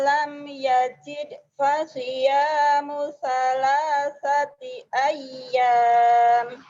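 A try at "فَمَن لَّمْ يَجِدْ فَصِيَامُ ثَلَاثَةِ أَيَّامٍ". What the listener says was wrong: Famal ya, bukan wamal. Ngucapin fa-nya kadang-kadang ke wa. Ngucapin wa-nya ke fa. Fa. Famalam yajid fasiyamu salasati ayyam.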